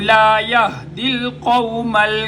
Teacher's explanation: ہا سینے کا زور لگا کر اس کو ادا کیا جائے گا